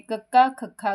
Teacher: ਢਕਵੇਂ ਵਿਅੰਜਨ ਉਹ ਵਿਅੰਜਨ ਹੁੰਦੇ ਹਨ ਜਿਨ੍ਹਾਂ ਦੇ ਉਚਾਰਨ ਸਮੇਂ ਫੇਫੜਿਆਂ ਵਿੱਚੋਂ ਬਾਹਰ ਨਿਕਲ ਰਹੀ ਹਵਾ ਨੂੰ ਮੂੰਹ ਵਿੱਚ ਕਿਸੇ ਨਾ ਕਿਸੇ ਥਾਂ ਤੇ ਪੂਰੀ ਤਰ੍ਹਾਂ ਰੋਕ ਕੇ ਇੱਕਦਮ ਛੱਡਿਆ ਜਾਂਦਾ ਹੈ। ਪੰਜਾਬੀ ਵਿੱਚ ਕੰਠੀ ਤੋਂ ਦੋ ਹੋਠੀ ਵਿਅੰਜਨਾਂ ਦੇ ਪਹਿਲੇ 3 ਅੱਖਰ ਢਕਵੇਂ ਵਿਅੰਜਨ ਹੈ।